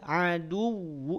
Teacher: aduwu tapi aduwu jelas bapak ibu Ayah Bunda semua jelas ya Jadi yang ditekan apa waunya bukan dalnya